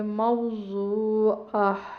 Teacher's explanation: یہ جو گول تا ہوتی ہے یہ وقف میں گول ہا میں بدل جاتی ہے، اور جو کہ اس پہ تنوین ہے تو یہ گول ہا میں بدلنے کے بعد یہ ساکن ہوگی ہا.